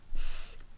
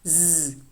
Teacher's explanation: Next, we have the alveolar fricatives. The voiceless alveolar fricative s, and the voiced alveolar fricative z